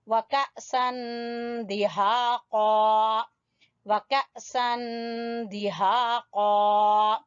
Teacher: अलिफ के ऊपर हमजा के ऊपर जज़म है तो यहाँ झटका देंगे